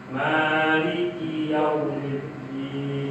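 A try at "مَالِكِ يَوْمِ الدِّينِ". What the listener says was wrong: Nah, rasakan lainnya, jangan keburu langsung ke mim. Maliki yaumiddin lah. Maliki yaumiddin. Perpindahannya coba.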